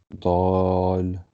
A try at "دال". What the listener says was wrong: Long کریں گے اس کو فل. دال دال.